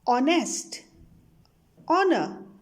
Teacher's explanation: here h is silent so these words sounds like the words starting with the vowel